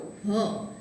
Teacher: હ છે એને અહીંયાથી તંત્રી વિવરમાંથી ઉચ્ચારણ થતું હોવાથી તંત્રી વિવરોત્થ સંઘર્ષી ધ્વનિ એવો પ્રકાર આપણે એવા પ્રકારમાં આપણે એને મૂકેલ છે.